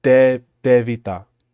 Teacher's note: it's like a voiceless d